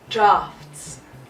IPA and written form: drɑːfts (draughts)